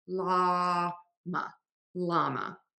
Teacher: It's spelled with LLaMA. And we don't have this like double L sound at the beginning of words in English. So we just use a regular L